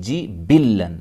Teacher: با کو ملائیں گے لام کے ساتھ، لام کو ڈبل پڑھیں گے